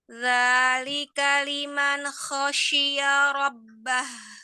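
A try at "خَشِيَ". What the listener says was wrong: Jangan ada pantulannya. Ya-nya tipis.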